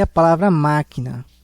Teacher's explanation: a palavra máquina, que é uma palavra proparoxítona, o acento na antepenúltima sílaba.